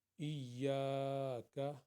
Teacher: ایاک، یہ یا کے ساتھ الف ہے، اس لیے ہم الف سے پہلے زبر ہے، اس لیے یا کو دو حرکت کے برابر پڑھیں گے۔ ایاک، کاف کو ایک حرکت کے برابر۔